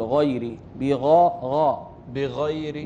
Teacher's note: حرف الغين في أعلى مراتب التفخيم